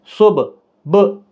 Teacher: जज़म, ये जो दाल जैसा छोटा सा होता है, जज़म वाले हरफ को साकिन हरफ कहते हैं। तो जब ये साकिन होते हैं तो इन पर क़लक़ला होता है